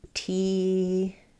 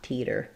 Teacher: So in the word teeter, letters EE most often say the E vowel. And then for words ending in TER, we tend to use a flap T there. So it sounds like teeter.